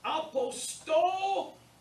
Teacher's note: So it's apostolis. Emphasis on the sto, the omicron. It takes the acute on the omicron.